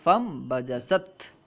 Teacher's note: ہم نون ساکن کو میم سے بدل کر پڑھیں گے